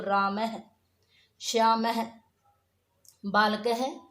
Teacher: विसर्ग का उच्चारण ह के समान होता है। जैसे राम के पीछे ये 2 विसर्ग लगाएंगे तो क्या बोलेंगे, इसको राम है, श्याम है, बालक है।